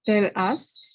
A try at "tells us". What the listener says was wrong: Close, but if you have the S, you have to make that S noticeable. So they are like connected, right? It's like one word. Tells us, tells us.